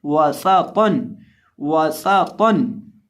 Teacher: वासातन, वासातन नहीं, वासातन। और इसी तरह जो सीन है इसके अंदर हमेशा सीटी की आवाज़ पैदा करके पढ़ते हैं और तौ को मोटा करके पढ़ेंगे तो आवाज़ आएगी वासातन वासातन।